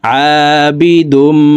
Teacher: এই তানউইনওয়ালা দালটি তাসদিদওয়ালা মিমের সাথে গুন্নার সহিত মিলাইয়া পড়ব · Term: ইদগামে বাগুন্না